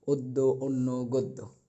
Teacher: যদি অ থাকে শব্দের শুরুতে এবং এরপরে ব্যঞ্জনের সাথে যদি জফলা থাকে, তাহলে অ এর উচ্চারণ ও এর মতো হবে